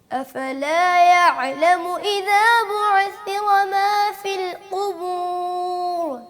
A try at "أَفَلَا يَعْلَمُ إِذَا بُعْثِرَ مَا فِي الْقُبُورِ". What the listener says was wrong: عین پہ قلقلہ نہیں ہے, حروف قلقلہ 5 ہی ہیں.